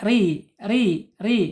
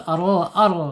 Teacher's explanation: Kalau kalau tipis itu kan ri ri ri kalau tebal r ar ya